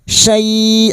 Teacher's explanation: bertemunya fathah dengan ya sukun dan diikuti huruf hidup yang dibaca waqaf mad layin empat harakat kita panjangkan sambil kita lunakkan